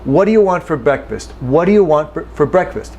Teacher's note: this do loses the oo character when we say this at normal speed. This is not fast talking necessarily.